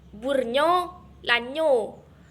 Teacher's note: N ada titik merupakan kontoid nasal, lamino-alveolar dan bersuara